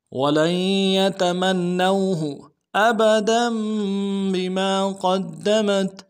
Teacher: ساتھ ملانا ہے، نون کے اوپر تشدید زور دیں گے اور نون کو واو کے ساتھ ملائیں گے، واو لین ہے، بغیر کھینچے پڑیں گے